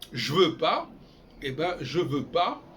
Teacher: on passe du J au V, il n'y a même pas de E, on l'entend pas, c'est ce qu'on appelle le muet, c'est-à-dire le sheva, quand on parle de l'hébreu.